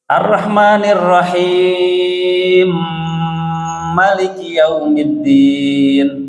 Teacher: Nah, jadi tidak Ar-Rahmanir Rahim Maliki Yaumiddin, tapi dibaca panjang dulu, ada mad di situ, kemudian ada tasydid. Masuk ke huruf mimnya jadi idgham kabir